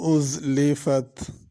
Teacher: ازلفت میں زا ہے، اس کو ذال نہیں پڑھنا